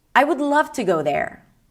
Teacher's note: So I'm ending the sentence with a really low note.